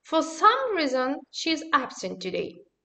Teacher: The adjective some, in the meaning of certain, always use its strong form, even when it is unstressed.